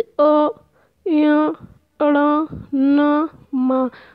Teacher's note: जो हवा है वो नासिका मतलब नाक के द्वारा निकलती है, तो वो अनुनासिक व्यंजन कहलाते हैं।